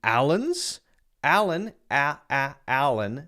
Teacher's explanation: the second a is a schwa and the first a is the regular a sound